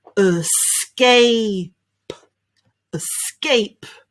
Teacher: sound at the beginning and a sound at the end and in the middle we've got a s and k put them together sk nice and loud in the middle